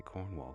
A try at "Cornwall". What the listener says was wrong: That's not how you pronounce Cornwall. Cornish don't over-enunciate anything. We don't like syllables down here. It's all, everything's one syllable. It's Cornwall, not Cornwall.